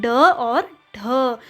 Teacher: तो देखिए इनका जो उच्चारण स्थान क्या है, मूर्धा, क्योंकि जीभ जो है वो क्या करती है, पहले ऊपर मूर्धा को टच करती है और झटके से नीचे आती है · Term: उत्क्षिप्त व्यंजन